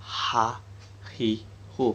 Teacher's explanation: Makhraj huruf ha adalah tenggorokan bagian tengah.